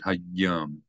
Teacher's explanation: Again, you have a dagesh in the yud, so not just hayom, but hayom. You hold down the yud a little bit.